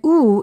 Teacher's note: ooh is a back vowel because the back part of the tongue goes up in the back part of the mouth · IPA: /u/